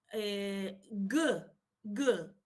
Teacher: the back of the tongue makes a complete closure with the soft palate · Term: linis velar